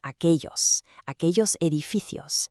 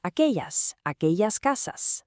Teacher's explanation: That double L sounds like a ya or soft J, depending on the region.